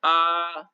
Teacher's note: नीचे गले से आवाज आ रही है और साउंड भी बुलंद आ रहा है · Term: जड़ स्वर